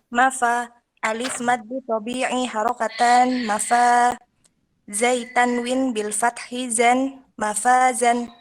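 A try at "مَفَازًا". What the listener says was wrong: Iya.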